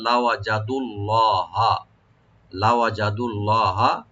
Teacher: লফজ জালাল এখানে মোটা করে পড়বো